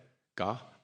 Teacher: So they're all pronounced at the back, they're called kantyas.